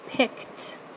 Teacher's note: And then for our last header, you're actually going to hear a T sound at the end. Like in the word picked, you actually hear a T sound even though you're ending an ED on the end of that word